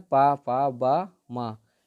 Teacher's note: जो ओंठों से बोले जाते हैं, इनका जीभ से कोई संबंध नहीं है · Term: पा वर्ग